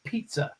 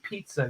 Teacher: If you hold your hand to your face, you say pizza, you can feel the breath behind it. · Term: plosives